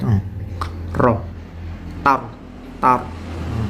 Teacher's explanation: mematikan ro itu yaitu makhrajnya ada di ujung lidah yang diangkat ke langit-langit